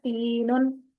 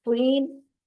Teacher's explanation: ان دونوں کا مخرج ایک ہی ہے لیکن پورا کرنے میں، یعنی ان کی صفات مختلف ہیں، تا باریک ہے اور تو موٹا پڑا جاتا ہے